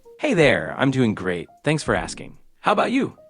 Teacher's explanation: Sounds pretty good with a little bit of vocal fry